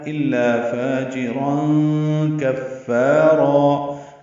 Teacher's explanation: دو زبریں ہیں اور تنوین کے بعد کاف آنے کی وجہ سے اخفا ہے ، الا فاجرا کفارا. فا اور را دونوں الف مدہ ہوں